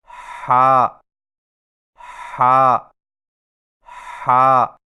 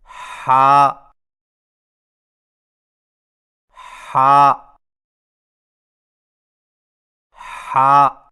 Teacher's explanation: زبان کی جڑ کو حلق کی طرف مضبوطی سے دباتے ہوئے باریک اور رگڑ کھاتی سانس میں پڑھیں